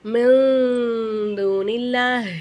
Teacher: நூனே சாக்கின்னு குன்னா செஞ்சு ஓதணும்.